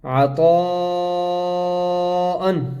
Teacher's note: طا کے اوپر بڑی مد ہے، اس کو ہم 5 الف کے برابر کھینچ کر پڑھیں گے